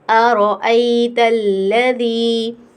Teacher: رو کو موٹا پڑھیں گے کیونکہ رو کے اوپر کیا ہے؟ زبر ہے